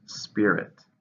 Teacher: it's a countable noun two syllable stress in the first